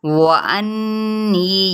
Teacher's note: यहाँ पे गुन्ना और साथ में या मद्दा हो रही है